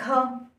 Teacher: महाप्राण के जो वर्ण होते हैं उनमें जब हम उनका उच्चारण करते हैं उसमें ह की ध्वनि आती है।